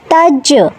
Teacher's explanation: জিম সাকিনে কলকলা প্রতিধ্বনি সৃষ্টি করে, কলকলা।